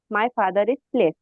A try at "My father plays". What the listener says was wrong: फादर प्लेज, असल में आपके आपकी गुड़िया एस की आवाज नहीं आई मुझे, मैंने इसीलिए